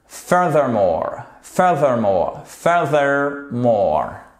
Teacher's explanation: Puisqu'on a notre TH ici qui est un peu dur à prononcer avec un accent sur la première syllabe.